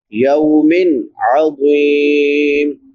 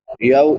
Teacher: عذاب یوم عظیم، یا کے بعد واو لین ہے، واو ساکن ما قبل فتحہ یعنی زبر ہے، تو اس کو ایک الف برابر لمبا کریں گے، یو اور نرمی سے ادا کریں گے